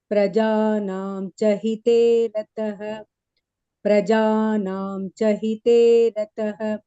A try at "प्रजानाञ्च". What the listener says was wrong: here anuswara rule will apply so instead of prajanam it will become prajanancha